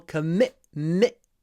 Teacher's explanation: The stress on the second syllable.